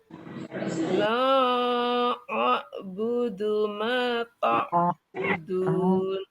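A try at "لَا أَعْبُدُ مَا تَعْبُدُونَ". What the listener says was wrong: Nah, Bu, la-nya Ibu memanjangkannya ada nyasar ke hidung. La-nya di aljauf, rongga mulut. La, tidak la. Nah, la. Jadi jangan sampai mad nyasar ke al-khoisum, ke hidung ya.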